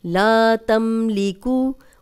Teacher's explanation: جزم والی میم آگے لام آ گیا غنہ نہیں کر رہے